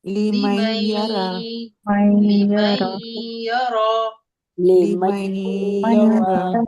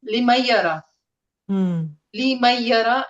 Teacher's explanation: So because it is a idgham with gunna, so you have to do a gunna there. That means you have to go 2 counts.